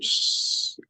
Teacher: And it's voiceless because when we do shh, our vocal cords doesn't move.